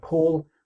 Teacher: we have a /p/ and an /l/ at the start and the finish, and a full vowel, /ɔː/, in the middle